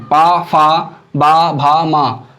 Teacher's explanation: इन वर्णों को बोलते समय हमारे होंठ आपस में जुड़ रहे हैं